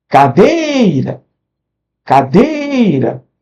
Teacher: A sílaba tônica é a penúltima. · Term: paroxítona